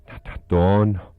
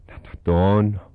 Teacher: It's got three whispered vowels and then one long voiced vowel